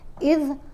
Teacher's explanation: ذال کو ادا کرتے ہوئے ہمیشہ زبان کو دانتوں کے درمیان میں آپ نے رکھنا ہے